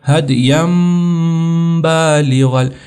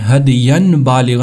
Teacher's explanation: جو نون ساکن اور تنوین کی آواز ہوتی ہے دن بن ان، اس آواز کو ہم میم میں کنورٹ کر دیتے ہیں، میم کی آواز نہیں.